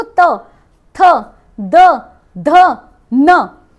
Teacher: जीभ कहां लग रही है? दांत पे। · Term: दंतव्य